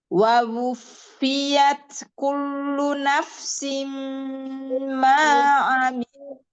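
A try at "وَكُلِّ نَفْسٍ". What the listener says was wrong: Lamnya. Biasa aja lamnya. Kullu nafsim Tasdid saja. Kalau itu terlepas ya, kulunya. Kullu nafsim itu terlepas.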